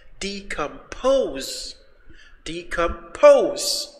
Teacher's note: The third syllable is stressed.